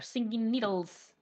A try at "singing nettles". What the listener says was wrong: It's nettle, not needle. Yeah, I was like seeing needles though.